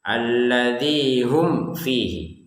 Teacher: Tidak ada dengungan, tidak ada samar